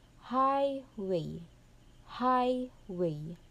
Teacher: In the word highway the stress is in the first syllable. · the first syllable is the stressed one, where you give emphasis or long sound, and in the second syllable is the unstressed. So the structured is stress to unstressed. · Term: true key